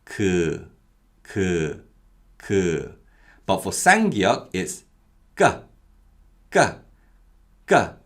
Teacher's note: and to make these sounds at the initial position of articulation the muscles around the mouth are very tense they're much more stronger and the sound is produced as we release from that initial position much more sharply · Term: tense consonants